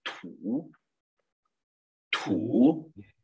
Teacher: fazer a explosão no T, né, que tem aquele sopro, né, ó, ter o sopro para poder fazer essa pronúncia bacana.